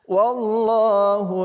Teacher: lafaz Allah kita baca secara tebal